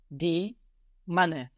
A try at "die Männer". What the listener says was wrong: But the umlaut? Die Männer. You added those 2 dots on the A and you got die Männer, which of course sounds much more like men.